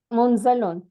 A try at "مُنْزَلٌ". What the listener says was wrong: munzalun with the fatha.